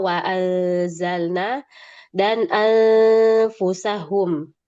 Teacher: kita akan mendengar adanya gunah yang panjang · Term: Ikhfa